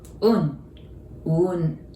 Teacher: So Uun, that's No. It prolongs U.